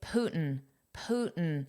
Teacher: the pronunciation without the T is more common especially in casual speech